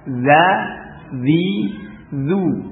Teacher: Sifat infitah pada zal dan sin, ya. Infitahnya lidahnya datar, ya.